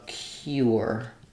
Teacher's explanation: Some people will use more of a tense oo vowel here and they'll do more of a cure.